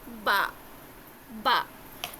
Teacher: با ہونٹ کے گیلے والے حصے کو، اوپر نیچے حصے کو ٹچ کر کے سختی کے ساتھ کھولیں گے تھوڑا.